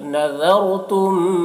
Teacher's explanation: ذال کو باریک پڑھیں گے اور را کو پر پڑھیں گے کیونکہ رائے ساکنہ سے پہلے زبر ہے